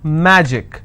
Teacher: magic i will stress on ma